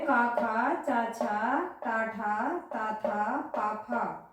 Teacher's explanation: इनमें कंपन नहीं होता है, इनमें कंपन नहीं होता है, ये सीधे सीधे पढ़ लिए जाते हैं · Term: अघोष व्यंजन